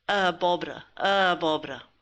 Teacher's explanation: Now note that we're running the A's into each other here.